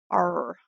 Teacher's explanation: R plus a vowel sounds like the beginning of a growl. R. So pronounced in the throat like a German or French R.